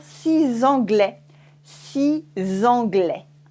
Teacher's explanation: If there is a vowel after it, which is une voyelle in French, we say z. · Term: the sound Z